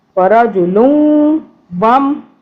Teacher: واو کے اوپر تشدید ہے تو ہم یہاں پہ 2 سے 3 سیکنڈ کے لیے ناک میں کریں گے